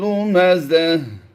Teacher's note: गोल ता को वक़फ़ में हमने हा साकिन से बदल देना है